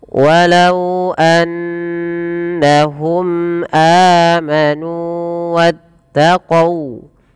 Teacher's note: panjangkan nunnya dua harakat karena ia mad thobi'i